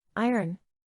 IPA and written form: ˈaɪərn (Iron)